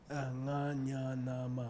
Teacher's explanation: They move up the throat in accordance with Sanskrit, ancient Sanskrit principles. Nga is made in the throat, nya is made in the back palate, na is made dental behind the front teeth. And ma's labial made with the lips. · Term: nasals